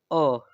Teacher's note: मध्य स्वर अर्थात इस प्रकार के स्वरों के उच्चारण में जो है जिह्वा के मध्य भाग में सर्वाधिक कंपन होता है। ठीक है, मध्य स्वर जो है उनके उच्चारण के समय जो जिह्वा का मध्य भाग होता है वहां पे सर्वाधिक कंपन होता है, इसलिए उन्हें मध्य स्वर कहते हैं।